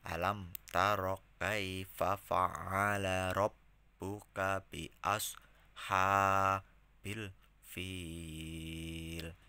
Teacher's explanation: karena dia di akhir ayat ya, jadi dibaca panjangnya 5 harokat.